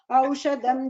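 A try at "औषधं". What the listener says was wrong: Again in the second line it is Aushadham. Dha is Mahaprana.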